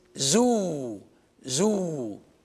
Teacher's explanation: And the two letters are the vowels, the vowel that's pronounced oo, closed O. It's not O, it is oo.